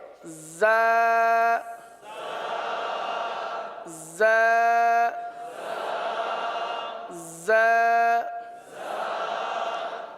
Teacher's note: زبان زیادہ تر نیچے کی جانب رہتی ہے اور نیچے کی جانب رہ کر زا سیٹی کی آواز کی طرح اس حرف کی آواز نکلتی ہے